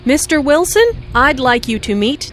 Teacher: Notice the rising intonation on Mr. Wilson, which is used to address someone.